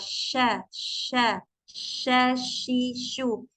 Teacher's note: akan ada udara yang menyebar memenuhi mulut kita ketika mengucapkan huruf syin · Jadi ketika mengucapkan huruf shin, makhrajnya huruf shin itu kan ada di tengah lidah ya dengan langit-langit. Tapi dia itu nggak menempel ya. Si tengah lidahnya itu nggak ditempelkan ke ujung ke langit-langit sya enggak.